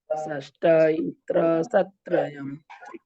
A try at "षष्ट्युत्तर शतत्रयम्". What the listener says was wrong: षष्टा नहीं है, षष्टियु का आधा है उसमें। का आधा है उसमें, षष्टियु है वो, षष्टियु। षष्ट्युत्तर शतत्रयम्। षष्ट्युत्तर शतत्रयम्।